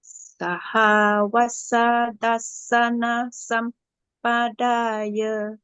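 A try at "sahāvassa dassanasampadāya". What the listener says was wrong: Perfect, yes.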